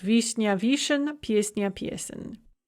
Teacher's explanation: Note the stress shift, and also note that we have this n ya that becomes n mягкий знак. However, вишня, cherry, becomes вишен with a hard n.